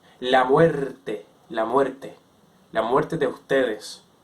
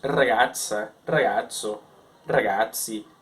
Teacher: Os italianos e os espanhóis, eles pronunciavam o R mais próximo da pronúncia latina tradicional, que seria a pronúncia vibrante, dental, né? O R que a língua, ela vibra atrás do dente